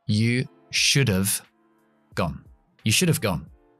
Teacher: voy a contraer have con should y se va a quedar en solamente como una F o una V